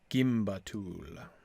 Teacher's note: word instead of a four-syllable word and here's the other thing have a stress on the last syllable